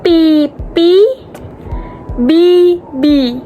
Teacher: Vokal I disebut sebagai vokal tinggi depan. Artinya, saat kita mengucapkan I, lidah kita terangkat ke atas dan ke depan. Dan kedua bibir kita agak terentang ke samping, seperti saat kita tersenyum.